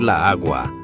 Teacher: Imagine trying to say la agua. Those two A's smash together and sound like a verbal glitch.